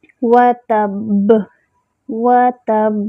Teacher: وَتَبْ، وَتَبْ، با پہ جو ہے کلکلہ ہوگا، اور با کا مخرج ہوتا ہے الشفتان، دونوں ہونٹوں کے تری والے حصے سختی سے ملنے سے با ادا ہوتا ہے۔ وَتَبْ، اور با میں جمع بھی ہوگا۔